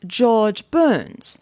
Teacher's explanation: rhodic meaning that we pronounce the r in all positions whereas british and australian english are non-rhodic meaning that they drop the r in a final position so an american pronounces the rs in george burns whereas a